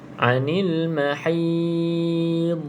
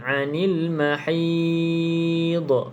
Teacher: Pada huruf dad, jangan ada lantunan sebab dia bukan qalqalah.